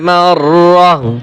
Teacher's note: ওয়াকফ করলে যে তা আছে, হা উচ্চারণ হবে।